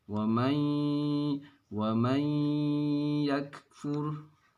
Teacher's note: Nah, kalau yang ini di ayat surat An-Nisa ayat 136 ini, itu nun sukun bertemu ya, artinya idgham bigunnah, maka dibaca dengan dengung atau ada gunnahnya.